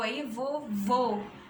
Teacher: A gente tem um O mais fechado